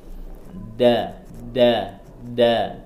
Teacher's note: Kemudian huruf dal, ya, saya ingatin kembali, huruf dal ujung lidah ada di gusi tempat tumbuhnya gigi, gusi atas, tempat tumbuhnya gigi atas. Da, kemudian ditahan, jangan sampai keluar anginnya.